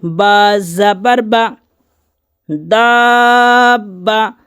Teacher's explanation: با پر تشدید ہے تو 2 مرتبہ پڑھیں گے۔